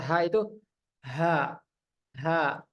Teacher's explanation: ketika kita baca ha itu ha ha mengalir dengan lancar Ya mengalir dengan deras napasnya aliran napasnya itu tidak tertahan sama sekali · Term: hams